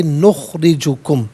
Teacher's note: نخرجو میں را کے نیچے زیر ہے، را کو باریک کر کے پڑھیں گے